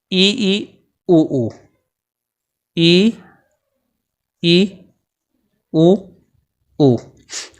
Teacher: जो संवृत स्वर होते हैं उन संवृत स्वरों का उच्चारण करने में जो मुख होता है वो कम खुलता है। यानी कि जो संवृत स्वर हैं इनके उच्चारण में जो अपना मुख है वो कैसा खुलता है, कम खुलता है।